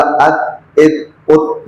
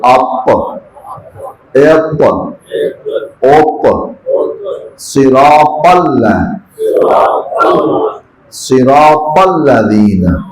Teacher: تے باریک ہے اور توئے موٹا ہے